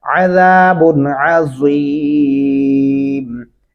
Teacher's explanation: یہاں اس با کے اوپر غنہ قطعاً نہیں کریں گے کیونکہ یہاں حروف حلقی میں سے آگے عین آ چکا ہے